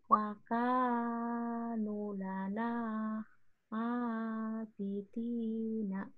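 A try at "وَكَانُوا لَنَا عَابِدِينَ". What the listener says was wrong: Nunya masih kependekan, Bu. Di panjangnya, panjangnya ditambah sedikit. Nunya panjang. Wakanu.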